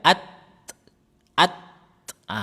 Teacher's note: At at ah ditekan aja jangan lembut-lembut ditekan kemudian dilepas itu nanti akan menjadi hames nyata. Jadi hames nyata itu bukan tambahan angin tetapi sisa dari penyebutan huruf ta. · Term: hames huruf ta